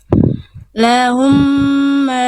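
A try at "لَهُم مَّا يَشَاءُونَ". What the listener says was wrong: Ma-nya berapa harokat, Bunda? Ada alis nggak? Ya nggak ada tanda alis Bunda di sana, jadi cukup 2 harokat aja.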